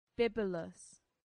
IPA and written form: ˈbɪbjʊləs (bibulous)